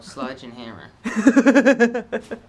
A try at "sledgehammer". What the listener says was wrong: It sounded like you said Sludge and Hammer. It's a sledgehammer, not a sludgehammer.